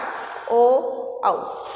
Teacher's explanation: एक आपका कंठ रहेगा और एक आपका ओष्ठम रहेगा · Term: कंठोष्ठम